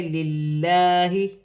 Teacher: لام باریک پڑھی جائے گی